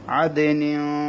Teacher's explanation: আদিনিন তানবিনের পরে তা এসেছে, অর্থাৎ 2 জেরের পরে তা এসেছে, সেজন্য এখানে গুণনা করতে হবে।